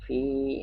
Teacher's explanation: Nah, kalau Fa ini makhrajul hurufnya adalah huruf safawi. Perut bibir bawah dengan gigi muka yang di atas, dan dia alhamas, ada mengeluarkan udara, dan dia rakhawah juga berlalu.